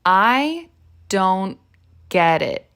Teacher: we don't complete the T sound at the end of don't